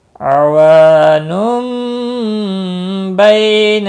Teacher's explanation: تنوین کے بعد متحرک با آیا ہے، یہاں پر قلب ہوگا، میم کتنی لگا ہے، اخفاء شفوی ہوگا۔